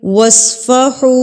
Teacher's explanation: صاد آ گیا تو صاد کو بھی ہم پر پڑھیں گے